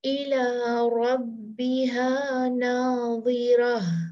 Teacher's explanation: جب ہم رکتے ہیں تا کو ہم ہا میں بدلتے ہیں تو وہ جو ہا ہے ساکن اس کی آواز بہت صاف آنی چاہیے